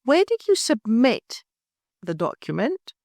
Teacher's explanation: stress the verb submit